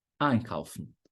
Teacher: a sílaba tônica vai ser em cima do ein.